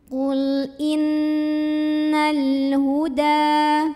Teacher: maka cara bacanya lam ini diidharkan atau dibaca dengan jelas, idhar komari.